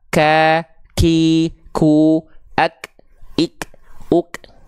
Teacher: kadar nafasnya bukan mengalir tapi hanya berupa percikan nafas saja